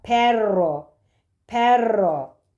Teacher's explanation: dil ucunu titerek çıkan bir r sesi